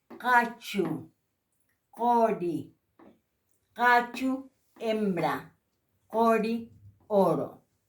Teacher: La Q, que en Aymara se dice K, eso se pronuncia K, por eso es con sonido fricativo.